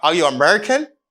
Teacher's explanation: when you inverse the subject with auxiliary verbs like are are you american it's a rising intonation